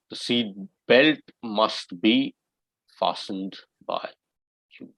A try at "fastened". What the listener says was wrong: T is silent over here. Sir, T is silent in that fastened, or it is fastened.